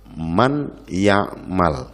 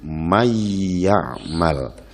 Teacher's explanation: Yang kedua adalah idgham, artinya terpadu atau tercampur, seperti dalam lafal man ya'mal. Suara nun menyatu dengan ya menjadi mayyamal.